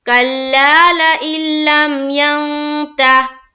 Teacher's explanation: نون ساکین ہے اور لام مشدد ہے، یعنی کہ لام کے اوپر شد ہے تو ظاہر ہے حمزہ کو ہم لام سے ملائیں گے، نون کو نہیں پڑھا جائے گا